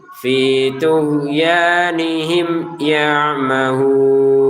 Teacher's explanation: Ya mahun di sini baca 6 harokat.